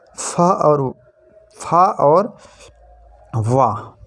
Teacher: दंतोष्ठ ऊपर से दांत और नीचे से होंठ से फा और वाह दंतोष्ठों में ऊपर के दांत और नीचे के होंठ होते हैं तो फा और वाह।